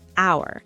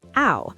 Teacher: The H is silent, so it starts with a vowel sound